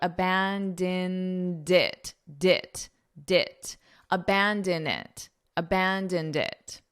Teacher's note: you have to hold that D out to connect, and it will sound like abandoned it, abandon it, abandoned it.